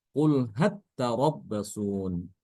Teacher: Kemudian yang kedua ya lamnya tu ditasdidkan ke huruf ta ya lamnya tuh ditasdidkan ke dalam huruf ta jadi lamnya hilang masuk ke dalam huruf ta